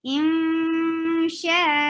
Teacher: you are hiding noon and not pronouncing it from your tongue. You are just holding sound in your nose. Insha, sha 4 haraka long. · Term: gunna